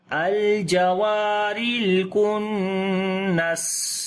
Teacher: سین کے اوپر صفت صفیر یعنی سیٹی کی آواز بھی آئے گی اور سانس بھی جاری ہوگا